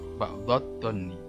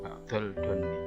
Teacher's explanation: Jadi alif lamnya tidak dibaca, jadi ke huruf dha. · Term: idgham samsiah